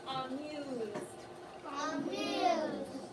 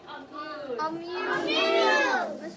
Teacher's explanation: So we're going to start with this first word, and the A is going to say the schwa sound up. It's not going to say at, it's not going to say a.